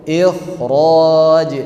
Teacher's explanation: jadi yang namanya huruf kha dalam kata ikhraj itu mesti datang dengan tafkhim yang sempurna